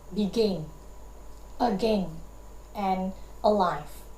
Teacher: one unstressed syllable followed by one stressed syllable